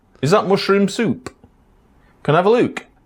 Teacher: Final PT and K sounds at the end of sentences could be pronounced as ejectives. These are sounds found in some Bantu languages as well as Amharic and many languages in North America.